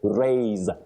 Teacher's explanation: to raise the flag with the sound Z, what we call the voiced sound Z